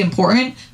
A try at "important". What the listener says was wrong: Important? If you don't say the T in words, you can kiss my ass. Important? Why did you just say the T? Important. It's important.